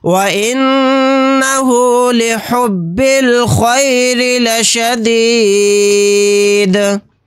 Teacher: یہاں پر نون کے اوپر تشدید ہے تو یہاں پر ہم غنہ کر کے پڑھیں گے۔ · یہاں پر را کو باریک پڑھیں گے کیونکہ را کے نیچے زیر ہے، اور یہاں پر آیت کرنے کی صورت میں دال کو ساکن بنا کر پڑھیں گے، اور دال ساکن ہوگا تو یہاں پر قلقلہ بھی ہوگا۔